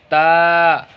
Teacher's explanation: जब ता निकालेंगे तो ता ज़बान का जो नोक है ऊपर के दांत पे सटाएंगे। ता, दांत की जड़ में, ठीक है।